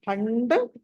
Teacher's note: తర్వాత ఆ అనుస్వారం ఉంది తర్వాత డ ఉంది కాబట్టి పంచమా అక్షరం ణ రావాలి